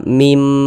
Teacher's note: bunyi Nun sukunnya ini dimasukkan ke huruf mim dia melebur ke huruf mim kita baca mim Jangan dibaca Min Jangan dibaca Min jangan jadi